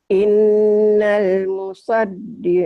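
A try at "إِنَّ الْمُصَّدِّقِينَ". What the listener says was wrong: Bukan. Ini innal musad double. Kalau dia ayat lain iya innal musad. Ini ada tasjidnya di sini. Innal musaddiqin ya, tasjid.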